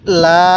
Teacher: এই লামের মধ্যে আমরা তিন আলিফ টান দিব